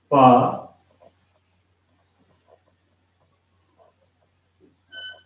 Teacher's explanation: being a voiceless sound, there should be no vibration in your vocal cords during the production of this sound